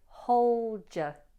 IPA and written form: həʊldjə (hold your)